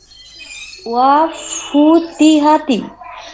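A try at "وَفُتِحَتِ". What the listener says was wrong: ওয়াফুতি, হা হবে না হা হবে? হা, ওয়াফুতি হা, হ্যাঁ, ওয়াফুতি হাতি, কোনো টান হবে না, তাড়াতাড়ি পড়তে হবে।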